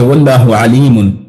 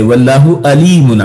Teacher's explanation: لیکن اگر کوئی شخص یہ کہہ دے واللہ علیم، عین کی بجائے علیم کہنے کی بجائے علیم کہہ دیتا ہے عین، تو پھر اس نے اصل میں بولنے میں عین کو الف سے حمزہ سے بدل دیا ہے